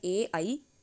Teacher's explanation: ए ऐ कंठ तालव्यो, इनसे उच्चारण होने वाले ए ऐ अन्यो वर्णयो उच्चारणम उभयो कंठ तालु स्थानो भवन्ति, इनका उच्चारण कंठ और तालु दोनों से होता है